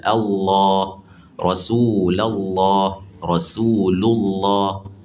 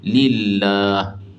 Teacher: Lam pada kalimah lafzul jalalah tu baru ditebalkan. Tapi kalau sebelumnya baris bawah, ha nipis lillah. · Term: tafkhim